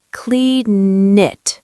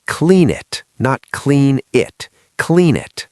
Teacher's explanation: The N in clean moves to the I in it.